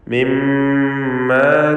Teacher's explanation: ഷദ്ദുള്ള മീമിനെ മണിക്കുക, 2 ഹറക്കത്തിൻ്റെ അളവിൽ ഉന്നത്ത് കൊടുക്കുക.